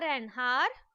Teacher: the word hour starts with the consonant letter H, but H is silent